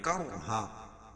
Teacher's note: کرہا رائے ساکنہ سے پہلے زبر ہے تو را کو پور پڑھیں گے.